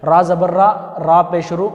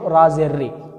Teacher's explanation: را کے اوپر زبر آئے اور را کے اوپر پیش آئے تو اس را کو موٹا پڑھنا چاہیے. جب را کے نیچے زیر آ جائے تو اسے باریک پڑھنا چاہیے